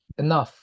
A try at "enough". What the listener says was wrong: Enough. Ini bukan I tapi enough.